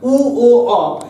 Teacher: উ ও অ এটা যখন উচ্চারণ করছি আমরা জিহ্বা কোথায় যাচ্ছে না পেছন দিকে সরে যাচ্ছে, তাই এই তিনটাকে আমরা বলছি পশ্চাৎ স্বর